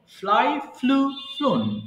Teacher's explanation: মাঝখানে এটা কিন্তু ফ্লু হবে, এটা ফ্লিউ হবে না, আমরা ভুল করে এটাকে ফ্লিউ বলে থাকি, এটা হবে ফ্লু।